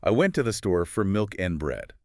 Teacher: You see the important words, the kings, they just pop out. The weak words to for and are almost invisible. If you were trying to hear a clear two or four, you will never find it.